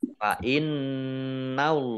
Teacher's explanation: nun tasdid dibaca gunnah atau mendengung, ditahan harokat. Allahnya dibaca tebal karena harokat di depannya fathah.